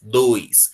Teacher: Na palavra dois a gente tem o ditongo, porque eu tenho O e I que não se separam.